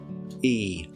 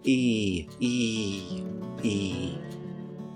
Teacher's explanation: We form it by stretching our lips back slightly as if we're going to smile and raising the front of our tongue up inside our mouth. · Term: close front unrounded vowel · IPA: /i:/